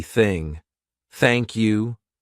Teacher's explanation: unvoiced th sound, which means our vocal cords are not going to vibrate. So, it's going to be thing.